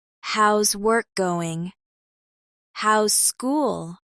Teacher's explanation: Notice the rising tone at the end, which shows you're asking a friendly question.